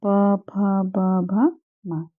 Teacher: हमारी जो होंठ है ना, जिन्हें ओष्ठ हिंदी में कहते हैं, इनसे उच्चारित हो रहे हैं। जब हमारे होंठ से उच्चारित होने की वजह से इन्हें ओष्ठ व्यंजन भी कहते हैं।